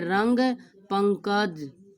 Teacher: ऐसे अनुस्वार में केवल नाक से हवा आएगी